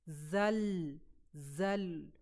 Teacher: इसको बिल्कुल भी आपने एकदम से झटका नहीं देना। इसको आपने कलकला नहीं करना। पूरा लाम के मखरज पर जाना है। जो कि जुबान की नोक के साथ साइड भी थोड़ी सी आपकी जो होती हैं वह ऊपर आपके गम के ऊपर जो हमारा पैेट है वहां पे जाके वो लगती हैं। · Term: लाम साखिन, लाम साकिन